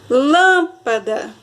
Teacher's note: O lã é a sílaba mais forte ela é a antepenúltima sílaba da palavra e ela é classificada, então, como proparoxítona.